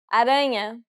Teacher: aranha, Since this word ends with a vowel that isn't an I or a U, the stress will be on the second to last syllable.